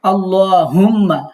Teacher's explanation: হুম্মা না, এটা হচ্ছে ধাক্কা দিয়া হা। আল্লাহুম্মা হা যেটা ধাক্কা দিতে হয় সেই হা এখানে।